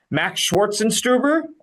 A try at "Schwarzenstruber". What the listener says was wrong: Swartz, almost. I think he added a little hint of an S to Schwarzenstruber, but I mean, it's four syllables, and you got 3 perfect and 1 like 90%.